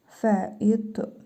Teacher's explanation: Fə-i qalın ta hərfidir. Üzərində cəzm var. Qalqalə edərək oxuyuruq.